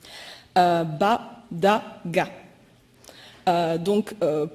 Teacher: Je vais vous donner un premier exemple au travers de la perception du lieu d'articulation des consonnes et au travers de l'exemple des consonnes orales plosives voisées